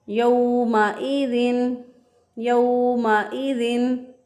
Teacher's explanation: या ज़बर वाव यौ, वाव साकिन से पहले वाले हरफ पर जब ज़बर हो तो वो वाव लीन होता है। तो इसको नरमी से आसानी से जल्दी से पढ़ेंगे, बहुत लंबा नहीं करेंगे इसको